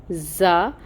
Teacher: اس کے اندر سٹی ہوتی ہے، وہ سٹی لے کے آئیں گے، زا، اور پھر فتحہ کی حرکت ہے 1 کاؤنٹ۔